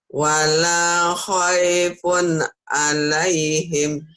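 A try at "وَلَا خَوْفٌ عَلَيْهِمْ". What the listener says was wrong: Bukan khaifun, Bu. Itu kan wow, Bu. Wala khaufun alaihim.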